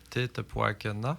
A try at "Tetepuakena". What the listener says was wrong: Tettepagen, le A ne se prononce pas. Tettepagen. C'est comme si c'était un N allongé. Tettepagen. À l'écriture, on met le A.